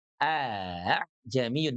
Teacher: Bukan huruf ha ya, bukan aha jamiun, tetapi huruf hamzah yang lembut gitu ya. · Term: tashil